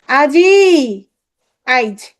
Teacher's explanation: শেষের ই ধ্বনি মাঝখানে বসছে, আগে চলে আসছে, এটা হচ্ছে অপিনিহিতি।